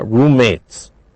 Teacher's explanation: we don't pronounce two m's only one m